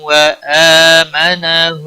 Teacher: 1 الف کے برابر کھینچ کر پڑھیں گے کیونکہ اس کے اوپر کھڑی زبر ہے